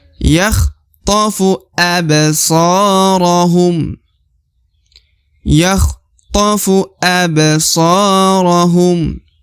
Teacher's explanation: so dipanjangkan 2 harokat karena terdapat alif di depan huruf so ya.